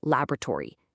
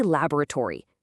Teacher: North American speakers will say laboratory, using three syllables. But British English speakers, they say laboratory, stretching it to four.